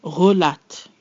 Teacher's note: We have our guttural R, followed by the French E, the distinct L, we have A, and then our T sound, relate.